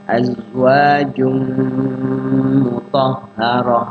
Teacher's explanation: ada tanwin, ketemu mim. Idgham bi gunnah, yaitu dimasukkan tanwinnya ke mim. Kemudian digunahkan artinya ditahan, dilakukan di situ.